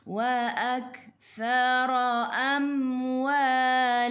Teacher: Ra baris atas kena baca tebal.